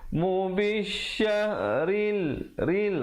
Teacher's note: ra di situ menjadi nipis